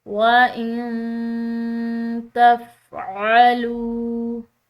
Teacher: نون ساکن کے بعد تا حروف اخفا کا حرف ہے، تو اس نون ساکن پر اخفا کریں گے